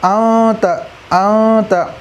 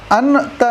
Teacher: یا نون ساکن کے بعد حروف اخفاء آویں تو نون کی آواز کو ناک میں چھپا کر پڑھنا چاہیے۔ اخفاء کی مقدار 1 الف ہے۔